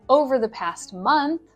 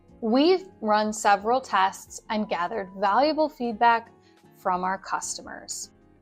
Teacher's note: Intonation goes down right before the period, and it goes up right before the comma.